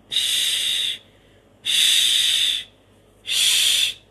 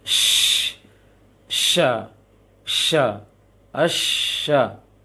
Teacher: Kemudian angkat tengah lisan sedikit, angkat tengah lisannya banyak-banyak, afan. Angkat tengah lisan saja, dibantu dengan tiupan angin. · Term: shin